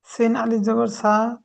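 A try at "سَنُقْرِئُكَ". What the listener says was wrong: সিন আলিফ জবার নেই। সিন জবর সা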